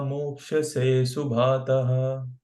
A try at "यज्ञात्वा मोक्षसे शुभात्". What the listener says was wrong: तहा नहीं है वहां पर, मोक्ष से There is no two dots after that line. That means there is no her.